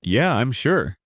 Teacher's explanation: Falling tone for confidence